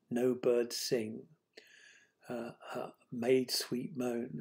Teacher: You get clusters of strong stresses, adjacent strong stresses